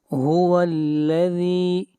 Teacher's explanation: ذال کو کھینچ کر پڑھیں گے ایک الف کے برابر